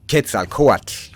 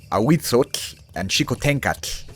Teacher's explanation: not pronouncing the L at all is more correct than the common exaggerated ol sound that adds the awkward extra syllable to these words. This is called an alveolar lateral fricative, and Wikipedia actually has an accurate and helpful page about this if you're interested.